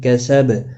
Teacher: ما الف مدہ ہے، 1 الف کے برابر کھینچ کر پڑھیں گے۔ کیسب، با ساکن پر قلقلہ ہوگا